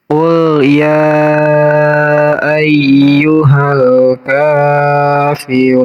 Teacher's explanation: Ru di sini dipanjangkan, kalau kita berhenti di sini namanya ini mad arid li sukun. · Jadi lamnya dibaca. Lamnya harus terbaca, namanya alif lam komariah.